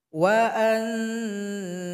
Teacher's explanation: ada nun sukun berjumpa dengan Zai Zai bukan huruf yang 8 maka didengungkan